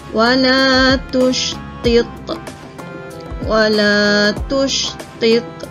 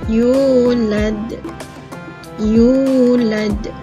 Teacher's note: Tapi kerana waqaf, kita sukunkan dia. Kesemua contoh-contoh qalqalah kubra ini dibaca dengan detakan yang kuat